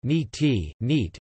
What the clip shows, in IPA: niːt